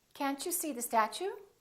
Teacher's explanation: When the T is followed by a U, it becomes chew.